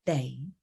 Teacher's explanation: it's your sixth low tone flat tone